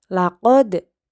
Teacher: Laqad dibaca memantul, yaitu qalqalah